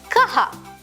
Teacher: The visarga adds a breathy sound to the consonant, creating kaha.